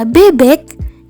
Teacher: bunyi E langsung tergeser oleh alat ucap menuju bunyi velar sehingga bunyi E menyatu dengan bunyi K